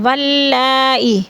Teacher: واللہ میں مد متصل ہے، 4 الفی مد ہے، 4 الف کے برابر اس کو کھینچ کر پڑھیں گے